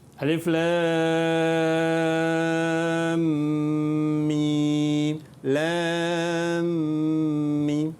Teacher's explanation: Sebab lam tu di hujungnya ada huruf mim dan bertemu pula dengan huruf mim. Jadi kita baca dengan kadar 6 harakat dan masukkan ke dalam huruf mim yang kedua itu. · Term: idgham